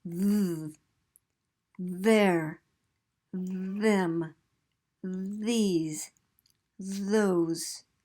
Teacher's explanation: which has one that's pronounced move they're them please those so that's a th sound but this time with voicing